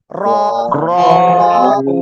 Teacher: র এক আলিফ টান হবে। মোটা আওয়াজে পড়তে হবে।